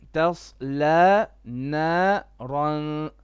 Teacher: so صاد is heavy, okay? Ta is flat.